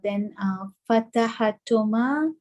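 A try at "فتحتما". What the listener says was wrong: No, not Fatahatuma. Fatahtuma. You need to remember the ha from the sixth form. Fatahtuma. The ha remains silent. Sukun.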